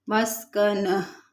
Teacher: जब हम वक्फ करेंगे तो ये जो गोल ता होती है ये हालत वक्फ में हा में बदल जाती है। मस्कनह, आखिर में हा की आवाज़ आनी चाहिए।